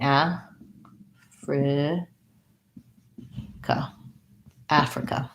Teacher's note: Africa, first syllable stress, and this has the black cat vowel. So a, fri, ka, ends with the schwa.